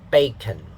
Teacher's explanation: the stress syllable is on the first syllable, so the first syllable will have a higher pitch.